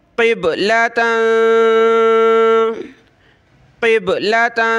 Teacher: قاف با زیر قب، ٹھیک ہے، اور یہ اوپر تا کے اوپر 2 زبر ہیں یعنی تنوین کلرفل ہے، اس پہ ہم نے ناک میں آواز پیدا کرنی ہے